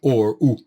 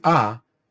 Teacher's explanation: pronounced as either uh or o is called this way because the lips become closed and condensed when you go or as opposed to patag which is another nikud which is ah and then the lips are opened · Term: kamat